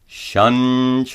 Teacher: Notice that the anusara is pronounced as a palatal nya.